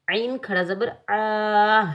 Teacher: عین کو حلق کے درمیان سے ادا کریں گے · عین کے اوپر کھڑی حرکات میں سے کھڑا زبر آ رہا ہے تو عین کو ہم ایک الف کی مقدار میں کھینچ کر ادا کریں گے